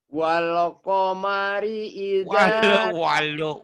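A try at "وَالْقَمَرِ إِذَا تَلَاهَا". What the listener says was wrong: Walu, ada U-nya tuh. Wal qamari idza talaha.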